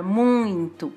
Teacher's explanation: foi o brasileiro que acrescentou uma letra N nessa palavra, muito, que não existe da forma escrita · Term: som nasal